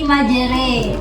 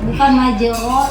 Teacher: fathah yang dimiringkan ke kasroh dan alif, maksudnya alif mat ya, yang dimiringkan ke ya, dibaca seperti orang timur. Huruf ro dibaca tarqiq, tipis. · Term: imalah